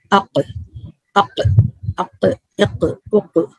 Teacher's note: ٹھیک ہے, جو ہم نے قلقلہ پڑھا تھا نا, قلقلہ کے 5 لیٹر ہے, اس میں سے یہ ایک ہے, اس میں قلقلہ بھی ہوگا. لیکن یہ articulation point deepest part of the tongue touches to the soft پیلیٹ · نرم تالو کو لگے گی. زبان کا آخری حصہ جو جڑ ہے نرم تالو کو لگے گی, اور وہاں سے یہ حرف ادا ہوگا قاف